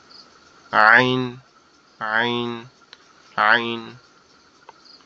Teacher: আইন হরফটা হচ্ছে আমাদের কণ্ঠনালীর মধ্যখান থেকে উচ্চারিত হয়, আওয়াজটা একটু চেপে হবে · একটু গলা চেপে আওয়াজ হবে